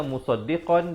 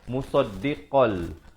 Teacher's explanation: Jadi dia hukum dia masuk tanpa dengung, idgham bila gunnah. Jadi asalnya musaddiqan, di sini baca musaddiqal.